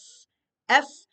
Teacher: the F, F is a non-vocalized sound. It's only air. You don't feel anything in your throat.